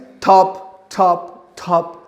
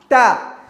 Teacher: you squeeze the tip, the top of the tongue, you squeeze it behind the teeth